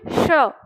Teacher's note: इस स का उच्चारण करो, लेकिन दंत से नहीं तालु से करना है।